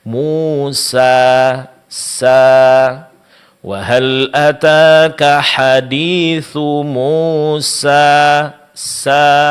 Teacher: Di sini bukanlah pengucapan yang benar untuk mad alif. Pengucapan yang benar adalah sempurnakan pengucapan harakat fathah sebelumnya dan panjangkan menjadi dua harakat.